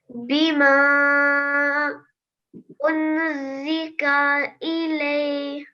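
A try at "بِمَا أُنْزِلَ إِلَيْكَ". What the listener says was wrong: No, not unzika. First of all, this is lam, so unzila, and then it's not unzila, it's unzila. So we have to conceal the noon sakin sound.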